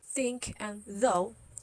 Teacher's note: these are interdentals so these are in between your teeth your tongue your goes in between your teeth